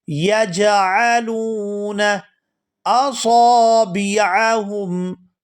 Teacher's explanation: ادا کریں گے، یجعلون اصابعہم، صاد کو پورا ادا کریں گے، صاد یہ ہمیشہ پورا ادا ہوتا ہے اور یہاں اس کے ساتھ الف مدہ ہے تو اس کو کھینچ کر ادا کیا جائے گا